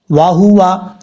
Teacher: واو کو پڑھتے وقت ہونٹ گول کریں گے